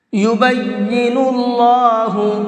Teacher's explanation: ذال، یبین اللہ، اللہ کلام کو پر کر کے پڑھیں گے، اس لیے کہ اللہ کلام سے پہلے پیش ہے، اور اللہ کلام سے پہلے پیش ہوتا ہے تو اللہ کلام کو پر کر کے پڑھتے ہیں، منہ بھر کے پڑھتے ہیں